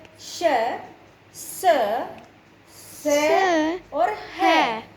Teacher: हवा जो है वो ज़्यादा घर्षण कर रही है, स की आवाज़ आ रही है ना, घिसने की आवाज़ आ रही है, तो हवा जो है गर्म होके निकलती है, इसीलिए इनको ऊष्म व्यंजन कहते हैं।